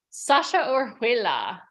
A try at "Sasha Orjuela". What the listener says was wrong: Very close. The H is silent, but everything else you got right.